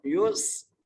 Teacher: سین سیٹی سے ادا ہوگا